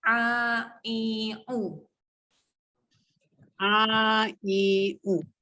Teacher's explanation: Huruf ain tengah-tengah kerongkong kena tekan sikit.